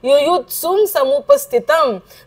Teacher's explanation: तला स जोडलेला आहे, त्याला पहिला उकार आहे आणि त्याच्यावरती अनुस्वार आहे. त्या अनुस्वाराचा उच्चार काय करायचा आहे? म करायचा आहे, कारण पुन्हा पुढे स दिलेला आहे.